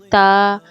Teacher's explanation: اس کے مخرج ہے، زبان کی نوک اوپر کے سامنے والے دانتوں مسوروں سے لگتی ہے۔ تا میں زبان کی نوک ہلکی لگتی ہے، نرمی سی آواز میں تا۔ دال دباؤ کے ساتھ درمیانی دال، اور طا میں زور دے کر زبان موڑ کر بھاری آواز کے ساتھ۔